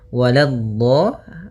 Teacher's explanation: Jangan walad tapi lanya tipis. Walad baru di dhadnya yang tebal.